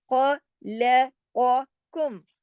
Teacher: اس میں 2 موٹے حروف ہیں، خواہ اور قوف، دونوں کو موٹا پڑھنا ہے، باقی تمام حروف باریک پڑھے جائیں گے۔